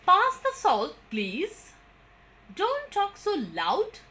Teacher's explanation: the commands we normally use the falling tone and all of them have the tones on the last word